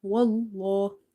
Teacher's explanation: so this lam is heavy